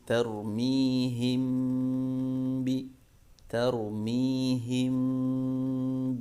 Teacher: dengan guna yaitu ditahan bacanya tidak tergesa-gesa tahan dulu tiga harokat kemudian dibaca dengan suara dengung yaitu dari suara rongga hidung · Mimnya tetap dibaca dengan menyentuhkan kedua bibir, ya, namun pertemuan kedua bibir tersebut tidak ditekan, ya, bibirnya tidak ditekan sehingga suara mim masih nampak samar, ya. Kemudian dibaca dengan gunnah, yaitu ditahan bacanya, tidak tergesa-gesa, tahan dulu, ya, 3 harokat, kemudian dibaca dengan suara dengung, yaitu dari suara rongga hidung, ya. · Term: ikhfa syafawi